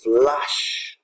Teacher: That strong fricative flush also seems to suggest just absolute happiness